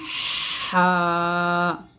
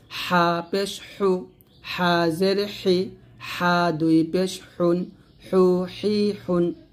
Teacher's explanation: হা যখন উচ্চারণ করবেন হলকের মাঝখান থেকে একটা চাপ দিয়ে উচ্চারণ করতে হবে।